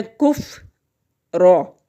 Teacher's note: فا ساکن ہے، کاف کے ساتھ ملے گا، ایک ہی دفعہ پڑھا جائے گا